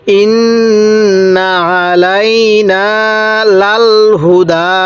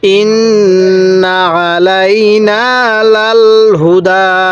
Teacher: নুনের উপর তাসদিদ আছে, এজন্য আমরা এখানে ওয়াজিব গুন্না করব